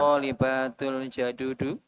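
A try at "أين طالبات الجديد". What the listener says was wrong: Jadud, enggak ada jadud. Jadid atau judud?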